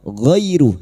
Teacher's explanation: fathah bertemu ya sukun kita lunakkan huruf lin